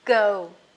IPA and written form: ɡəʊ (go)